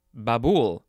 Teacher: the emphasis is on the second syllable